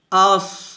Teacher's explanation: সদ এটা মোটা হরফ, তবে সদ কি হবে হামস হবে, বাতাস বের হবে